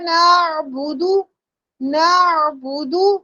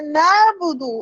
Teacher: عین ساکن بہت پیار سے ادا کرنا ہے، سافٹ ادا کرنا ہے، جھٹکا نہیں لگانا. نعبدو ایسے نہیں کرنا، نعبدو ایسے نہیں کرنا.